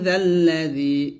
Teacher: মাং যাল্লাযী, এই জাল যখন উচ্চারণ করবেন জিহ্বাটা উপর তাতে আগে লাগিয়ে পাতলা উচ্চারণ করবেন। এখানে জাল আলি জবর যা না বলে জালকে লামকে ধরবেন সরাসরি।